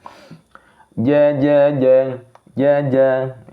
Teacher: Huruf jim tidak ada di hames. Jadi nafas tidak berjalan keluar. Berarti di sini jahr laju nafas tertahan.